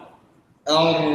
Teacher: الراء المفخمه فيها تقعر لوسط اللسان انظر وتضييق في الحلق هذا الحلق انظر كيف تضيق واضح التضيق